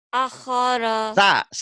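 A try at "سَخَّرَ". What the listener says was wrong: Bukan A. Sa tuh ini mah. Sakhara.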